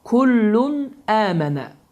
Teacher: Və bu zamanda əlif gəldiyi üçün kullun sözünün sonunda olan n səsi, yəni tənvinin sonunda olan n səsi açıq-aşkar bir şəkildə oxunur və həmin də qaydanın adı izhar qaydası adlanır. · N səsi buruna verilmir. Açıq əşkar bir şəkildə tələffüz olunur.